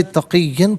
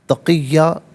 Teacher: اسے تقیًا پڑھیں گے، وقف کی صورت میں تقیہ پڑھا جائے گا۔ یہاں پر دو زبر کی تنوین ہے، وقف میں الف سے چینج ہو جاتی ہے